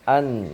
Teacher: An misalnya, meskipun idhar itu tetap ada hunahnya ya. Idhar halqi itu nun sukunnya tetap ada sifat hunahnya meskipun sedikit. Tetap ada yang lewat khayshum, maka nun sukun itu berarti dua makhraj.